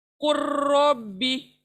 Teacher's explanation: Next लेते हैं मिसाल कुल और रब्बी, तो इन दोनों को जब हम जोड़ेंगे तो लाम को छोड़ देंगे, क्योंकि लाम छोटा है और रो बड़ा है शद वाला।